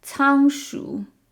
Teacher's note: the letter C in Chinese is never pronounced like K. It's pronounced like ts.